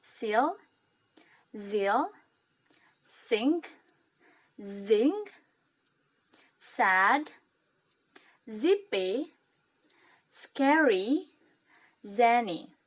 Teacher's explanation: Alveolar adalah huruf-huruf alveolar yang mengandung huruf S dan Z. Jadi ketika kita ingin mengucapkan huruf S dan Z ini, ujung lidah kita berada di punggung alveolar belakang gigi.